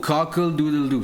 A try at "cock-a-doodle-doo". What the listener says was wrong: Cockle. It's not cockle. Cock-a-doodle-doo. It's not cocka.